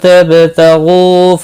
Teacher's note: با ساکن پر قلقلہ ہوگا۔ غین مستعلیہ ہے، پر پڑھا جائے گا۔ غو مدہ ہے، ایک الف کے برابر کھینچ کر پڑھیں گے۔ · نون ساکن کے بعد حروف اخفا کا تا آیا، اخفا حقیقی ہوگا، گناہ کے ساتھ پڑھیں گے۔ با ساکن پر قلقلہ ہوگا۔ غین مستعلیہ ہے، پر پڑھا جائے گا۔